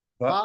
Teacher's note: एक अलिफ के बराबर, ज्यादा लंबा भी नहीं करना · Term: हरफ मद्दा